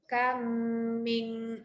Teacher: Bunyi mim pertama tu dah masuk kepada bunyi mim yang kedua. Jadi bacalah panjang untuk dengung.